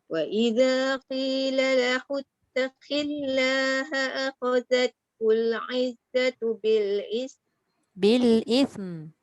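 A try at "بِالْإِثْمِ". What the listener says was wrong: Bunyikan mim. Tu bil ism. Tak bunyi. Dia rapat bibir je tak boleh. Dia kena bunyikan sifat mim tu. Bil ism. Tak sampai. Ism. Bukan ismi. Rapat je bibir dan keluarkan suara. Bil ism. tak bunyi. Dia kena bunyi.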